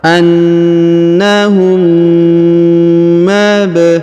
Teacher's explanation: Huruf ba berharokat sukun maka kita pantulkan atau kita qalqalahkan.